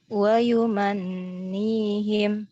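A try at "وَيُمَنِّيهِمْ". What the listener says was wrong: Nah, kurang. Ya, kalau Ana ditahannya agak lama ya. Wa yumannihim.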